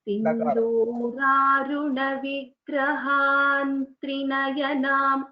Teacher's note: since there is a Anuswara which is succeeded by a Takara, so you know when you are chanting together that line, it should sound as Sindhuraruna Vigrahan Trinayanam